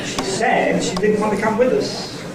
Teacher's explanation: There was a boundary between said and she. Okay. So the first word group was she said and the second word group was she didn't want to come with us. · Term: word group boundary